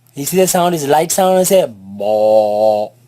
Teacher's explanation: It is elongated, it is stretched because of the alif following it. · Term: letter ba